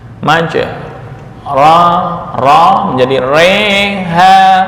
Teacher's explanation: yang asalnya fathah ya dibaca antara fathah dengan kasrah majreha atau mengimalahkan Alif yang jatuh setelah ro ke ya